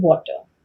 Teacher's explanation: So you need to round your lips for the w. You need to drop your jaw down for the a. You need to lift your tongue to say the t, make a contact to the palate, and then again round your lips and with the tongue going the optimal position to say r.